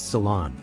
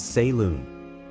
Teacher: the stress is on the second syllable and the O has a soft open Sound